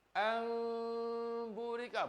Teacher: Kalau kita ikhfakan, jadi dia tutup mulut tapi dia tak rapat.